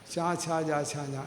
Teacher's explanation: നാക്കൊന്ന് പരത്തി മുകളിൽ മുട്ടിച്ചാലോ ചാന്നാവും.